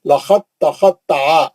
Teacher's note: अब ये दाल नहीं पढ़ेंगे, साकिन हर्फ हमेशा गायब हो जाएगा, निकाल देंगे, इदगाम हो जाएगा साकिन हर्फ का। लखत दाल पे जज्म था, अब दाल नहीं पढ़ेंगे, ता में चले जाएंगे सीधा